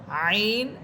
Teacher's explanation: আইন কন্ঠনারীর মধ্যখান থেকে